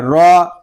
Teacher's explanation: را کو ہم پر پڑھیں گے کیونکہ را کے اوپر زبر آ گیا ہے